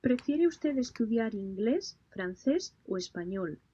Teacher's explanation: when the speaker is talking about English, the pitch goes up, and when it reach Espanol, it falls down